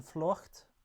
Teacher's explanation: Flucht, a high back round lax vowel. So the lax variant of U.